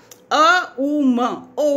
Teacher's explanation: वो मुंह आधा होते होते तक वो ऊ में परिवर्तित हो जाता है, और जैसे ही दोनों होंठ बंद हुए, आपका अ का उच्चारण बंद होठों से नहीं निकल सकता, तो वो परिवर्तित हो जाता है, वो जो शब्द की ध्वनि है म में।